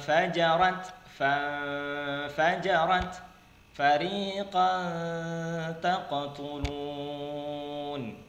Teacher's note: Ya, walaupun dia tidak terlalu gunnah harusnya, ya, namun dia masuk pada ikhfa-nya, ya, lebih ditekankan pada ikhfa, yaitu samar-samar, tidak terlalu gunnah, tidak terlalu izhar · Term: ikhfa haqiqi